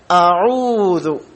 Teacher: ഹംസയുടെ മഖ്റജ് അഥവാ ഉത്ഭവസ്ഥാനം തൊണ്ടയുടെ ഏറ്റവും താഴെ അഖ്സൽ ഹൽഖ് എന്ന് നമ്മൾ പഠിച്ചിട്ടുണ്ട്. അൽ ഹംസതു വൽ ഹാഉ മിൻ അഖ്സൽ ഹൽഖ, തൊണ്ടയുടെ ഏറ്റവും താഴത്ത് നിന്നാണ്.